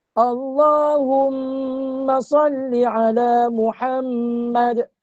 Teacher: Bila mim yang bersyaddah, hukum dia wajibal ghunnah.